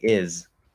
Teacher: it's supposed to be a z here which is the voiced version of s and you have to at least start the z as a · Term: z sound